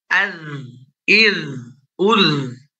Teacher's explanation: Ketika dia sukun, dia tetap mengalir suaranya. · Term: rokhwah